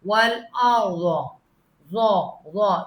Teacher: را کو آپ پر پڑھیں گے، آگے زواد بھی پر ہے